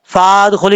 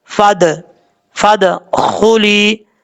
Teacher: اب اس کے بعد ہے فادخلی، دال میں قلقلہ ہے، فا کو جب دال سے کنیکٹ کریں گے تو بیچ میں جو الف ہے اس کو چھوڑ دیں گے